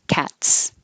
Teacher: or uh if the last sound in the word is voiceless cat is voiceless there's no vibration in the throat so the S really sounds like an S